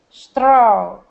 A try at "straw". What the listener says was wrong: Almost. That R is giving us troubles here.